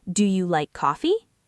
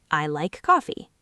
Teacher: For example, in English, when you ask a question, your intonation usually goes up at the end, like, "Do you like coffee?" Your voice rises on coffee, but when you make a statement, your voice goes down.